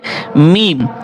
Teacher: দুই ঠোটের শুকনা জায়গা হতে একটি হরফ উচ্চারিত হয়